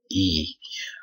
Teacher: vokal I adalah vokal depan tinggi atau atas, tidak bulat posisinya